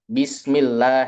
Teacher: kalau di bahasa Arab Bismillah itu kan tidak boleh keluar angin, tapi kalau orang Jawa taunya ya ba.